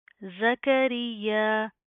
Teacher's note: یا کے اوپر تشدید آ رہی ہے, سختی سے جما کر پڑھیں گے